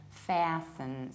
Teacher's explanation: So instead of long R, we have ash, fasten. But as you can hear, I skip T and I reduce the ending.